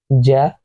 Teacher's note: تو یہ تینوں حروف زبان کے درمیانی حصے سے پڑھے جاتے ہیں. زبان کا درمیانی حصہ جیم کو پڑھتے وقت اوپر کی جانب اٹھتا ہے اور اوپر منہ کا جو اوپری حصہ ہے تالو کی طرف وہاں ٹچ ہوتا ہے